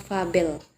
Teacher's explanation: termasuk dalam jenis labiodental yaitu bibir bawah bersentuh dengan ujung gigi atas